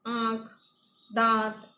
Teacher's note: મુખપથ અને નાસિકાપથ બંનેમાંથી હવા અવરોધ વગર પસાર થાય ત્યારે આંખ, દાંત, આમાં આનું જે ઉચ્ચારણ છે તેવું સ્વરનું નાસિક્ય અથવા તો સાનુનાસિક ઉચ્ચારણ થાય છે